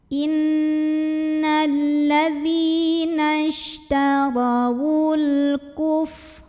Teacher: Karena ada alif lam yang bertemu huruf qamariyah yaitu kaf. Maka cara baca lam sukun ini dibunyikan dengan idhar atau jelas bunyi L-nya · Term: alif lam qamariyah